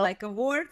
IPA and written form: əˈwɔrd (award)